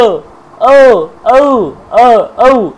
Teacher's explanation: তারপরে দেখুন ও ঔ, কণ্ঠস্থ, ও, ঔ, ও, ঔ, কণ্ঠ এবং ওষ্ঠ দুটোকে লাগে ও